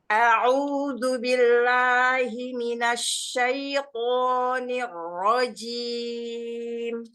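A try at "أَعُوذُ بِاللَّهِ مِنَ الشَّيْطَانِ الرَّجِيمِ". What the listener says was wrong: Hati-hati jimnya, jangan cim-cim. Ini rojim, jelaskan jimnya.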